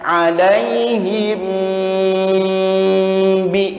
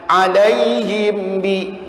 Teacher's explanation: ini harus didengungkan karena dihukumi ikhfa syafawi, mim sukun bertemu dengan ba.